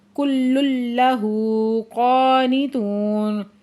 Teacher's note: کل لہ قانتون، اب یہاں پہ لام مشدد سختی سے پڑھیں گے، پھر تنوین کے بعد آگے لام مشدد آ گیا تو ادغام میں یرملون بلا غنہ ہو رہا ہے۔ ہو کے اوپر الٹا پیش ہے، دو حرکت کھینچ کے پڑھیں گے۔